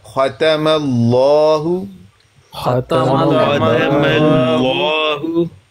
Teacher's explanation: ختم اللہ لفظ اللہ سے پہلے ہے زبر، میم پر زبر. لفظ اللہ سے پہلے زبر، تو کیا کریں گے؟ لام کو لام مفخم پڑھیں گے